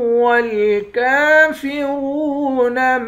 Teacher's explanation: کاف کے اوپر کھڑا زبر ہے، ایک الف کے مقدار کھینچ کر پڑھیں گے۔ را کو واو کے ساتھ ملا کر واو کو بھی ایک الف کے مقدار کھینچیں گے، واو حروف مدہ ہے۔